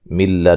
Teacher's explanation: نون ساکن کا ادغام ہے بلا غنہ